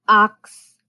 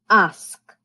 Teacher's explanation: the k and the s switch places